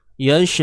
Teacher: Ingat, tahqiq, jelaskan sebutan hamzah tu, baris pada hamzah tu jelaskan.